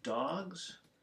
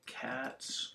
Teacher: So dogs is a Z sound, cats is an S sound